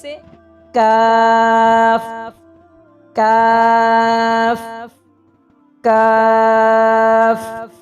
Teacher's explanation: जड़ जबान तालू से मिलकर जरा मुंह की जानिब हट कर निकलता है। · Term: छोटा काफ